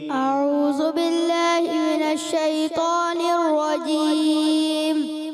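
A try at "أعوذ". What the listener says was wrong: اعوذ، ذال کی ادائیگی آپ نے کلیئر کریں. اعوذ، زو نہیں ہے.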